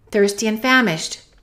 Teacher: we can eliminate that D in the word and